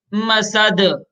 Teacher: دال میں قلقلہ کریں گے. دال حروف قلقلہ میں سے ہے.